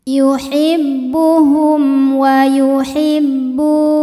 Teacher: Yuhibbuhum wa yuhibbu, bu hukumnya adalah mad tabi'i dhahiri sebab ada waw sukun didahului harokat dhammah, maka huruf ba kita panjangkan 2 harokat saja